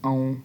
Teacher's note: हमज़ा को भी वाव से मिलाते हुए औं, नून की आवाज़ नहीं आनी चाहिए